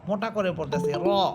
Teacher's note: মোটা করে পড়তেছি র, আকারের উচ্চারণ ছাড়া পড়তেছি। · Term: মোটা হরফে